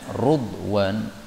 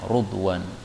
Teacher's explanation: Ridwan boleh dibaca rudwan, ra-nya di dhammah ya, rudwan.